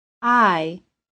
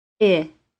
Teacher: very brief Y sound at the end of it I I the long i is a two sound vowel to create this sound begin with your tongue in the middle